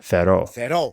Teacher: But I think one voice actor is trying to do the vowel quantity thing again, where they don't pronounce a stress, but they keep equal quantity on both syllables because they're both long in this case.